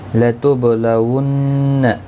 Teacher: با ساکن پر قلقلہ ہوگا، ون نون مشدد پر گنہ ہوگا، گنہ کے ساتھ پڑھیں گے